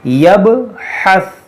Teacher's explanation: دیکھیے یہ حروف قلقلہ ہے، اس میں قلقلہ کریں گے، یب، یبحث۔ اور یہ ثا میں قلقلہ نہیں کریں گے، یہ پہ زبان روک دیں گے، یبحث۔ اور یہ حا کو صحیح سے ادا کریں گے، یبحث۔